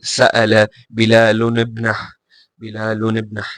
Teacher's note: we pronounce it with a kasra, yani with the kasra type sound in between the two words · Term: iltiqa' al-sakinain